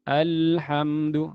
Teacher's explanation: Dia tidak tertahan, tidak seperti ad, tapi ini lam masih mengalir ya sampai habis suara baru berhenti. Ternyata dia lewat samping suaranya ini. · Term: bainiyah